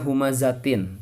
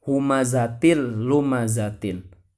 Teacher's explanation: lumazah Tin kenapa harus dibaca humazatil lumazah Tin karena disitu terdapat tanwin bertemu dengan huruf lam sehingga tanwin itu dimasukkan ke huruf lam tidak ditahan tidak dibaca humazatillumazah Tin tidak tapi ini bacanya humazatin humazatillumazah Tin